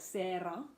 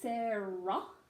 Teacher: in Australian English, we flip the tongue back, but we don't use a trill